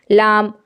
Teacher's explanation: لام کو جب آپ ادا کریں گی تو آواز زبان کے سرے کی طرف یعنی اوپر کی طرف جائے گی